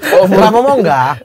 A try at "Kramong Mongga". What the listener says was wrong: Bicara biasa saja, jangan tidak usah dipatah-patah Bicara coba cepat.